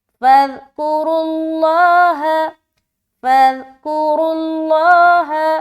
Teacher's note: را بھی موٹا پیش آنے کی صورت میں، را بھی موٹا اور لفظ اللہ کا لام بھی موٹا